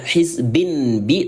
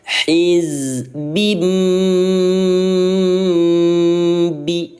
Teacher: Ingat kalau iqlab bacanya m. Jadi jangan dibaca hizbin bi tapi hizbim bi seperti itu.